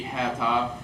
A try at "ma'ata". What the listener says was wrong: Yeah, it'd be ma'ata, ma'ata, ma'ata. In other words, the first two syllables will be the same force. It will not blend. It doesn't become mata. It's ma'ata. Okay, you still pronounce it. Don't blend them.